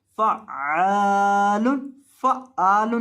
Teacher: आइन को अपने हलक के दरमियान से अदा करना है और लंबा करना है क्योंकि इसके बाद अलिफ मद्दा है।